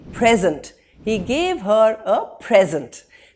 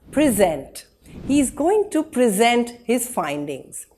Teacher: He gave her a present. The emphasis is on the first syllable. As a verb, present. He is going to present his findings. Here, we emphasize the second syllable.